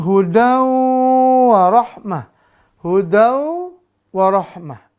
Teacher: durasi dengungnya 2 sampai 3 harakat maka harus ditahan